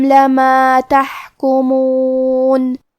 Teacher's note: کلمت تحکمون میں حا کی ادائیگی حلق کے درمیان والی حصے سے ہے اور کیونکہ اس پہ جزم ہے تو ہمیں حا کو ظاہر کرنا ہے.